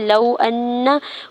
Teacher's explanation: لو ان، واو ساکن پر لام کے اوپر زبر ہے، واو لین ہو رہا ہے، نرمی سے موڑتے ہوئے ادا کریں گے